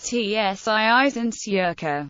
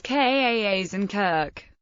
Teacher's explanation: when followed by some vowels, the Germanic k developed into a ch sound